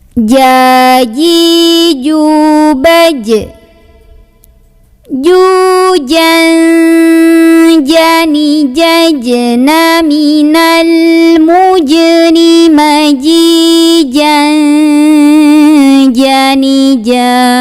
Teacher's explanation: Huruf jim keluar dari lidah bagian tengah ketemu langit-langit tengah ya. Nggak boleh ada angin, nggak boleh ca tapi ja.